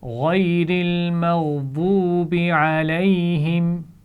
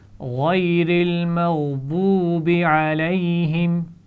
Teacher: مغضوبی، واو ساکن سے پہلے پیش آ رہا ہے تو ہم واو کو کھینچ کر پڑھیں گے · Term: واو مدہ